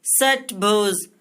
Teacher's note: जब हम इस मूर्धन्य स का उच्चारण करते हैं दोस्तों तो हमारा जो जीभ होता है वो मूर्धा को टच करता है, इसलिए हम इसे मूर्धन्य स कहते हैं।